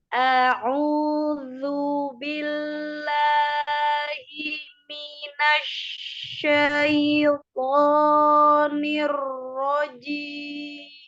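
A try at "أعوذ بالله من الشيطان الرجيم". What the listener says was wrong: Ya, coba bilang bilang dulu zalnya zu, tidak berlebihan mengeluarkan ujung lidah, bukan zu, bukan ya. Juga tidak lebih. sedikit saja nempel di ujung gigi seri atas. Lu, tapi tidak ditekan, lu, bukan. Karena dia sifatnya lembut. A'udzu, a'udzu.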